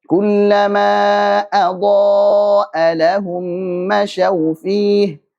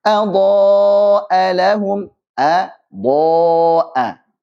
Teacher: Ada hamzah dan juga hamzah. Diselingi oleh huruf dhad yang tebal dan juga alifnya ikut tebal.